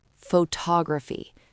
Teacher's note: The stress is on tog. That is the king. Everything else is a ghost.